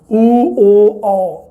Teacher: ਪਿਛਲੇ ਸਵਰ ਮਤਲਬ ਜੀਭ ਦਾ ਪਿਛਲਾ ਹਿੱਸਾ ਉੱਪਰ ਉੱਠੇ